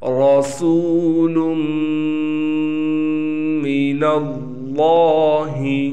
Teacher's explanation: را موٹا پڑھا جائے گا، سین سیٹی والا حرف ہے